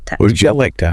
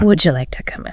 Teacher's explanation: the K sound at the end of like flows directly into the T sound of to and the vowel in to gets reduced. It's not a strong two sound.